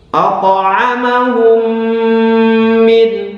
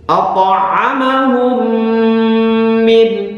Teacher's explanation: Kemudian berikutnya yang dibaca dengung yang lama adalah ketika ada mim sukun bertemu mim. Mim sukun bertemu mim, maka dibaca dengung yang lama. Hukum bacaannya adalah idgham misli.